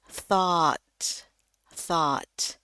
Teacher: hanya bunyinya satu, A, ya, A-nya tuh tebal, A, thought, thought.